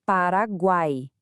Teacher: A sequência, o a tem som de semivogal, vogal e semivogal, tudo junto na mesma sílaba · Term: tritongo